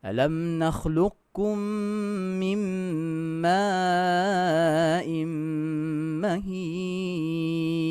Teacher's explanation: Mim dengan mim kita dengung.